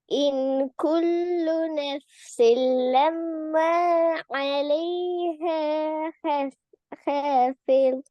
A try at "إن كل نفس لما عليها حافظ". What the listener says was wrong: அதை உடைக்க கூடாது. அலைஹா ஹாஃபில் சேர்ந்து வரணும்.